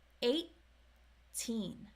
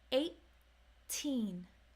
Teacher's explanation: you don't let the air out until teen